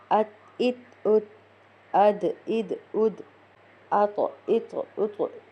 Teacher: پھر ہم لگائیں گے جسم کے ساتھ، ات، ات، ات، اد، اد، اد، اط، اط، اط۔ یہاں پر دال اور طا میں نے قلقلہ کیا